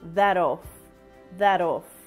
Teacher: pronounces this with a flap te sound